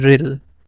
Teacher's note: the re is directly going to connect with lam, this alif becomes silent because it's coming in the middle, it becomes ril.